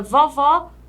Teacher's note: no caso da palavra vovó com acento agudo abre mais a letra